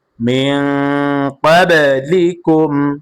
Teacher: এভাবে মিম সাকিনকে গুন্না করা যাবে না, মিম সাকিনে ইজহার গুন্না ছাড়া স্পষ্ট হবে।